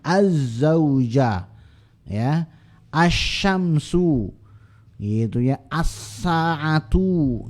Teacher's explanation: Tapi si aznya, si zainya dikasih tanda tasydid untuk menunjukkan bahwasanya bunyi L melebur ke bunyi zai, walaupun tulisan L-nya masih ada tapi bunyinya sudah hilang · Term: idgham